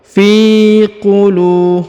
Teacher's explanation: Perhatikan dulu huruf fi dibaca 2 harokat ya, karena di depannya terdapat ya sukun. Fi qulu, huruf lu dibaca panjang 2 harokat karena di depannya terdapat waw sukun